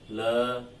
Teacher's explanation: जैसे हम इसका उच्चारण कर रहे हैं ल, जीवा में न कोई कंपन हुआ, न जीवा ने किसी भाग को स्पर्श किया · यानी जब हम ल को उच्चारित करते हैं, बोलते हैं, तो जीवा खुली रह जाती है और जीवा के दोनों ओर से, दोनों अगल बगल से जो है वायु बाहर निकल जाती है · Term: पार्श्विक व्यंजन